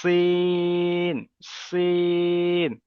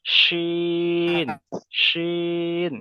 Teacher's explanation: সিনের আওয়াজটা হবে সিটির মতো, সিটির মতো আওয়াজ হবে। সিন, সিন। আর এটার আওয়াজ হবে শিন, শিন।